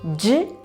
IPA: ʝ